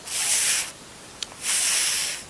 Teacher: the organ of speech that obstruct the airflow is the upper front teeth and the lower lip. So they come together to obstruct the airflow from flowing freely out of the mouth. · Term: the sound f